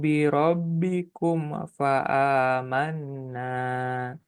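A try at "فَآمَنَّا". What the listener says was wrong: Dengungkan nun tasydid. Jangan lupa. Manna.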